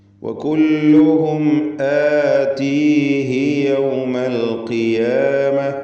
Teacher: ആതീഹി അന്ത്യത്തിൽ വന്ന ഉദ്ദമീർ അതിന് അല്പം പോലും ദീർഘമില്ല, കാരണം തൊട്ട് മുമ്പിൽ സുക്കൂനുണ്ട് എന്നതുകൊണ്ട്.